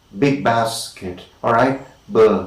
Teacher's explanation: In the case of b, the active articulator and the passive articulator are the lips, and we call them bilabial plosives